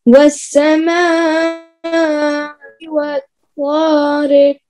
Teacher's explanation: یہ مد متصل ہے, بڑی مد, مد واجب. 3 الف برابر کھینچیں گے.